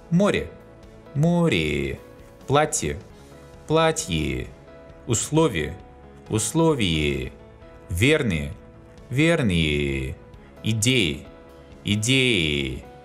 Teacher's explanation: In the final position, unstressed ye specifies a sound between e and i, or a very closed e.